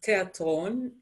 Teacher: we don't have a th sound